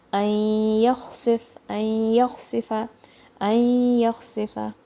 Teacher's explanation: Kha will come from the upper throat, and it's a flowy sound.